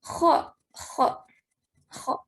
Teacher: Kho ngorok, ada ngoroknya.